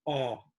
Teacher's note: Now, the Japanese A is tongue forward, The American A is aw, tongue back, aw. Raise the tongue more, aw.